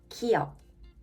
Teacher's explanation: In the middle or at the end, it can sound more like G. Your tongue touches the back of the mouth, the soft palate.